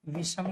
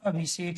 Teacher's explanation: दंतव्य से का परिवर्तन मूर्धन्य से में हो जाता है